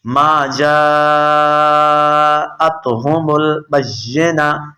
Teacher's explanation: جیم کے اوپر مد ہے، آپ نے 4 حرکات کے برابر اسے کھینچ کر پڑھنا ہے